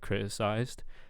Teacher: I'm not hearing a t I'm almost hearing a glottal stop